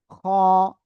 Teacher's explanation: গলার শেষ ভাগ থেকে অক্ষরটা উচ্চারণ হবে, মোটা আওয়াজে পড়তে হবে।